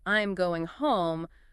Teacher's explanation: Like saying, "I'm going home puts the emphasis on the destination. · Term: sentence stress